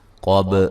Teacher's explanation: قاف کو موٹا ادا کریں گے، با پہ قلقلہ کریں گے